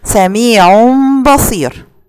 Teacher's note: هنلاقي ان التنوين هنا جه في كلمه والباء جالي في كلمه اخرى، يبقى هنا بعمل له اقلاب